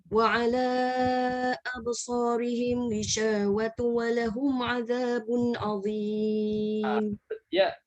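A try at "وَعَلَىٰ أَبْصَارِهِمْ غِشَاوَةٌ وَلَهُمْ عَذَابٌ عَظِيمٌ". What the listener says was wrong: Jangan lupa baris 2 tu. Dia betul-betul bunyi baris 2 ghishawatu wa lahum. Ada nampak sambung tekan. Idgham ghishawatu wa lahum.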